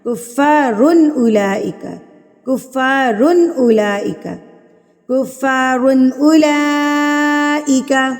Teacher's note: کیسے دینی ہے؟ نہ تو اتنی جلدی دینی ہے کہ اکفا لگے، اور نہ اتنا لمبا کرنا ہے کہ غنہ لگے، نارمل درمیانہ